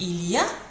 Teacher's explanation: The first one is il y a, with your rising intonation.